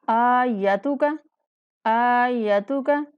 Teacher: یہاں پہ حمزہ کو ایک الف کے برابر لمبا کرنا ہے اور یا کو بنا کھینچے پڑھیں گے